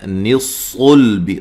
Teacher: صاد کو موٹا لام کو باریک. غلطی کیا ہوتی ہے، صاد کے ساتھ لام کو بھی موٹا کر دیتے ہیں، آپ نے لام کو باریک پڑھنا ہے، صاد کو صرف موٹا پڑھنا ہے، ٹھیک ہے.